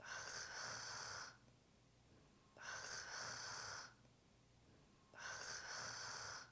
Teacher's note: The French R is not a harsh sound, it is not [rrrrrr]. It is more subtle and delicate.